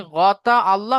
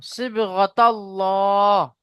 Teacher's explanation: صبغة الله আপনি আবার আল্লাহ করছেন, তা ডাইরেক্ট লামের সাথে যাবে, তাল্ল, তা লাম জাবার তাল, লাম খাড়া যাবার ল, তাল্ল।